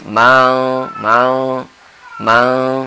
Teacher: gigi kita jangan dirapatkan buka sedikit supaya samar tidak jelas n-nya itu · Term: ikhfa